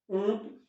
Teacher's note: अनुनासिक में जो प्राण वायु है वह मुख और नाक, नासिका, इन दोनों से एक साथ बाहर निकाली जाती है।